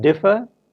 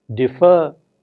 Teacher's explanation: one differ is stressed on the first syllable defer is stressed on the second syllable